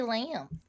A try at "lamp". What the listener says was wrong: Sound like a lamb, like the animal.